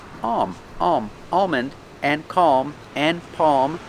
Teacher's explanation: the tongue goes up like you're going to make an l but it never touches the roof so you don't hear an l · with words like calm and almond, these words have ALM, but the L is silent, or you don't hear it.